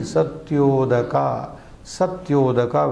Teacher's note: Seventh, Satya plus Udaga. This is A joining with U, therefore resulting in O, this is a Guna Sandhi